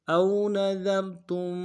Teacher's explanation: ذال کو باریک ادا کریں گے، را کو موٹا ادا کریں گے